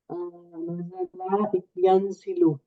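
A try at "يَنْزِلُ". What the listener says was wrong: यंजिलु। ये जई पे जबर है ना, आपने इसको जेर कर देना है, ठीक है।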